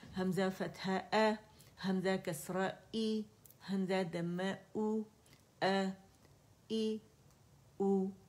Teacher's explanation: لیکن کیونکہ ان پہ حرکات ہیں, اور حرکات ہم کی اپنی کوئی آواز نہیں ہوتی, یہ ہمیں سمت بتاتی ہے, ڈائریکشن بتاتی ہے کہ آواز کس سمت جا رہی ہے. فتح کے لیے آواز اوپر جائے گی, کسرہ کے لیے نیچے, اینڈ ضمہ کے لیے گول ہو جائے گی آواز